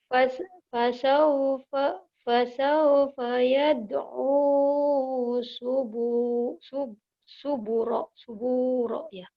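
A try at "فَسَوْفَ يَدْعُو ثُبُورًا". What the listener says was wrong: Ya, sa ujung lidah. Cadel, cadel. Kok sih? Yad. Fasawfa yad'u thubura.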